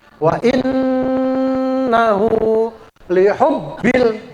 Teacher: Kalau nun yang bertasdid tadi dibaca gunnah. Wa in, ya, an-nya itu ditahan dulu, itu namanya gunnah